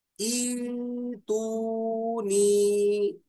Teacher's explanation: اب دیکھیے، ایک ہی کلمے میں دو حمزہ آ جائیں، پہلا متحرک دوسرا ساکن ہو، تو دوسرے حمزہ کو پہلے حمزہ کے موافق حرف مد سے بدل کر پڑھیں گے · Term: ابدال